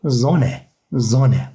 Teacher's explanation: Burada da iki tane sessiz harf olduğu için biz O'yu kısa okuyacağız. İki sessiz harf tek harf şeklinde okunur.